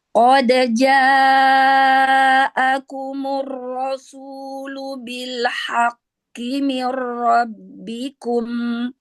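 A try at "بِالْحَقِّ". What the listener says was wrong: Ya, qafnya itu masih ada hamas tuh. Ya, jangan ada hamas. Kalau masih ada hamas itu berarti dia kecampur ke makhraj huruf kaf itu.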